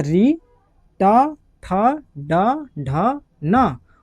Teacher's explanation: तो मूर्धा से कौन सा वर्ण निकलता है? तो बोलना कि सबसे पहले निकलता है ऋ ट, ठ, ड, ढ, न।